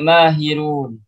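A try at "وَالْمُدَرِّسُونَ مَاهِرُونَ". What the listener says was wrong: mahiruna, hidupkan semua harakatnya. Mahiruna.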